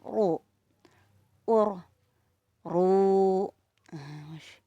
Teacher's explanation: Apa kunci ro tebal itu? lidah belakang. Lidah belakang diangkat, tenggorokan menegang